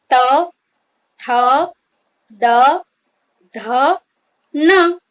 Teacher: ત્યારબાદ જોઈએ આપણે દંત્ય વ્યંજન ત, થ, દ, ધ, ન. બોલતી વખતે જીભ દાંતને અડે છે.